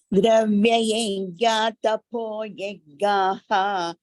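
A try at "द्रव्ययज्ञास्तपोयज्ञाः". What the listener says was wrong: Here it is also dravya yajnaha, tapo yajnaha. Instead of that visarga, they have used this sakara, sa. So you should pronounce that. Dravya yajnas tapo yajnaha.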